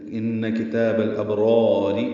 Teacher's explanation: دوسری را باریک ہے زیر کی وجہ سے، لفی لام کو جلدی پڑھنا ہے، فی یا مدہ ہے۔